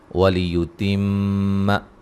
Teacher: میم مشدد پہ غنہ ضروری ہے